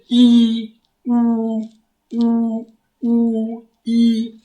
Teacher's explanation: जिन स्वरों के उच्चारण में मुख द्वार लगभग बंद रहता है, जैसे ई उ ई, इनमें, तो इनमें क्या होता है, मुख द्वार लगभग बंद ही रहता है। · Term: संवृत